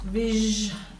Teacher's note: You've got this s, vij, making a zh sound there.